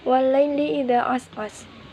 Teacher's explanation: alif didahului fathah dibaca panjang selama 1 alif atau 2 harokat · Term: matobi'i